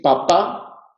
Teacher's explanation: ambas P's son oclusivas. En las sordas es necesaria la oclusión porque no hay apoyo sonoro de las cuerdas vocales.